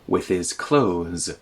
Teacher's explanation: The TH sound in clothes can just be removed. Close, like close a door.